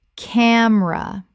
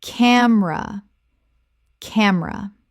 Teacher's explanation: Two syllables in natural speech, the middle vowel disappears.